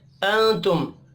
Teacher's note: نون ساکن کے بعد تا ہے اخفا حقیقی ہوگا